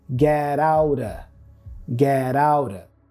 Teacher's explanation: And then of is reduced to a schwa sound, So putting it all together, we have get outa, get outa.